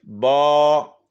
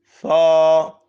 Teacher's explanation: الف واو یا، الف سے پہلے زبر ہو تو الف مدہ، واو ساکن سے پہلے پیش ہو تو واو مدہ، یا ساکن سے پہلے زیر ہو تو یا مدہ۔ تو مدہ والے حرف کو ایک الف کے برابر لمبا کر کے پڑھتے ہیں